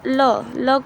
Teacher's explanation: ओठ दोनों का मिलाकर तब यह बनता है अहम दंत ल ल को बोलेंगे तो दांत को स्पर्श होता है